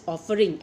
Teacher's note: Accent falls on off, not ing